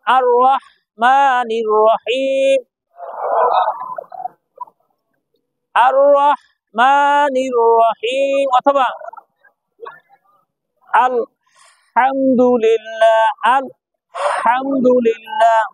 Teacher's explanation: এই হাটা গলার মধ্যে থেকে চেপে আসবে, মাঝখান থেকে বলেন হা, হা। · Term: লম্বা হা